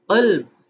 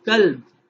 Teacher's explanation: इसको देखते हैं ज़रा हम कि सिफात में गलती हो, क़ल्ब काफ को अगर मोटा यानी पुर करके, जिसे हम इस्तिलाह में पढ़ते हैं पुर करना यानी मोटा करके पढ़ा जाना